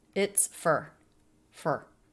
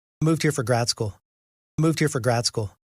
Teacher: We have a for reduction. It's not pronounced for, is it? It's fur. Fur. Moved here for grad school.